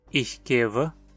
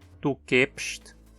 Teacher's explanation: Note como o som de V em keva mudou para um P em kepst. Representamos isso trocando o W por dois Bs.